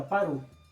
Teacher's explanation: Na pronunciação rápida, a gente diz exatamente para o. Ou seja, automaticamente junta-se essa sílaba, né, a última sílaba de para, com o artigo que vem em seguida. Então, no lugar de para o, fica parou. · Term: elisão